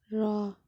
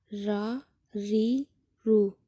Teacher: جب ثنایا، رباعی، انیاب ان 3 دانتوں کے مسوڑوں سے لگے تو یہاں سے را ادا ہوتا ہے